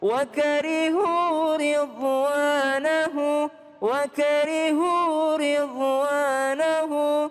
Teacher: Jangan wakarihu kepanjangan 4 harakat, 2 harakat saja.